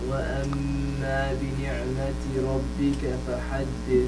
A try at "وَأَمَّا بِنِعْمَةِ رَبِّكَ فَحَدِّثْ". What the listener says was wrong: Can you add more غنة to it? Just one more time. وأما. Yeah, it's just I think some of us still inshallah the غنة we're not giving it when it comes with a noon and a mim mushaddada, it's not as strong. You just need to work on that.